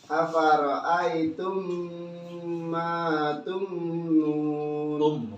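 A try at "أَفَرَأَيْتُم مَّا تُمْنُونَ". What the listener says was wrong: Lama sedikit ya. Afara'aitum ma tumnun. Kayak ditahannya kelamaan sedikit aja. Tinggal dilepas. Ma tumnun gitu aja. Ma tum.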